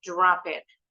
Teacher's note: kata Drop It akhirannya drop kata kerja ini akhirannya huruf P kata berikutnya berawalan huruf i jadi huruf p-nya didorong digeser ditempelin ke bunyi huruf i tadi